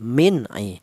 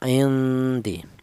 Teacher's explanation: jika ada nun mati berjumpa dengan huruf dal dibaca samar atau dibaca ikhfa, yang dibaca samar adalah nun matinya. Indi seperti itu.